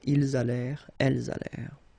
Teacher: Ils allèrent, liaison, elles allèrent. And then this ENT at the end, you know, the mark for the plural, well, clearly you don't pronounce it, so you get allèrent.